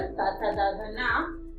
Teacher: ये नाम हमारे दंताः दांतों से उच्चारित किए जाते हैं